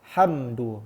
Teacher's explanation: Izhar syafawi. Huruf mim sukun bertemu dengan huruf dal. Cara macam alhamdu, ada dengung? Tak ada.